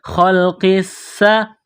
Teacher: قاف کو موٹا کرنا ہے، یہ بڑا قاف ہے۔ قاف کو سین کے ساتھ ملائیں گے، پلس کریں گے تشدید کی وجہ سے، سین کو دبانا ہے، سین میں سیٹی کی آواز پیدا کرنی ہے۔